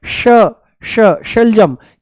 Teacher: जैसे ही हम बोलते हैं श, जैसे ही बोलते हैं हम श, मूर्धा ऊपर से बोला जाता है, श श, जीभ को थोड़ा सा ऊपर घुमा करके तालू से लगा करके बोला जाता है श। इसका उच्चारण है श, मूर्धा ऊपर है ना श, और इसका है स, स, ये है स, दांतों से बोला जाएगा, ये है तालू से श।